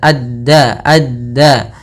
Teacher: ujung lidahnya nempel gusi atas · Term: Dal